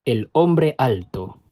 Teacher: Notice that the speaker's voice stops between each word instead of the words linking together. · There also tends to be a lot less liaison before words that start with vowels, in other words, less linking, and the use of a glottal stop before those words instead.